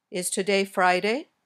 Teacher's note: These questions usually have Rising intonation your voice goes up at the end